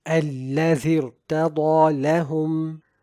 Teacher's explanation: the tongue concaves in the case of the mukhaffam ra, causing the sound to be directed towards the roof of the mouth · While in this case, the hamza itself is not recited, but the ra is still recited with tafkheem since the kasrah is from the earlier word and it is considered as an incidental kasrah. So we recite the ra with tafkheem, as in الَّذِي ارْتَضَى لَهُمْ.